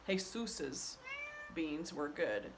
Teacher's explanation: the accent is on the last syllable so i would have to say jesus beans were good